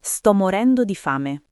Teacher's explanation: fame si dice con la a aperta, quasi fai me, non stretta. E non si allunga troppo, è rapido, diretto.